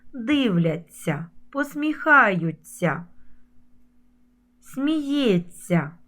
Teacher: на ця завжди пишемо знак м'якшення і вимовляємо ця як ця як м'який подовжений звук ць три букви а звук один ць